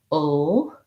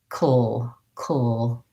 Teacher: But because it doesn't have another vowel sound before it, it's a syllabic L in this case. It's just a dark L added right onto another consonant. So to say that, I would maybe build it from the back.